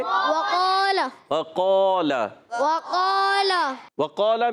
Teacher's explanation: قاف کا مخرج زبان کی جڑ تالو کا نرم حصہ, یہ قاف کا مخرج ہے. اور قاف الف زبر قا, الف مدہ ہے, اور قاف کے بعد یعنی حرف مستعلیہ کے بعد الف آ جائے تو وہ الف بھی موٹا پڑھا جاتا ہے, اس کو بھی ہم پر پڑھیں گے.